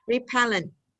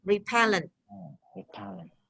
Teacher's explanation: So although the word has 3 syllables like repellent, when we pronounce individually, repellent, the stress is on the second